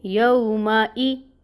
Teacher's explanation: حمزہ کے نیچے کسرہ، یعنی یومائی، ای کی ساؤنڈ آئے گی یہاں پہ، اور 1 کاؤنٹ پڑھیں گے